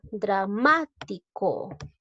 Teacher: Lleva la mayor fuerza de voz en la sílaba ma, porque se tilde esta palabra por ser esdrújula.